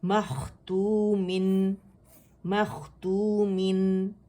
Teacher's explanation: ہم نے اظہار کرنا ہے نون کا جو میم کے اندر چھپا ہوا ہے، تنوین کے اندر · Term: نون کا اظہار